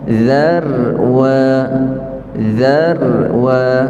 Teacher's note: Za itu nipis ra itu kita tebalkan